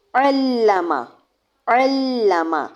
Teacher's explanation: عین کو لام کے ساتھ شدت کے ساتھ ملایا، پھر لام کی زبر پڑی اور اس کو لمبا نہیں کرنا